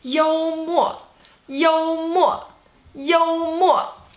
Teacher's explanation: First tone, fourth tone.